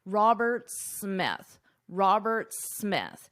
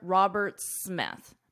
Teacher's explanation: his name ends in an S, Roberts. But the second part of his last name starts in an S. So in this case, you only pronounce one S